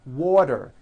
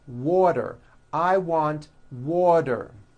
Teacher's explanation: The T turns into a D and the whole word is voiced.